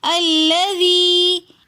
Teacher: یا ساکن اور اس سے پہلے زیر ہے تو یا مدہ ہونے کی وجہ سے ہم الذی ایک الف کی مقدار کھینچ کر پڑھیں گے